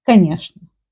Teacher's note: There is a rule in Russian language when instead of чны, they pronounce like шны.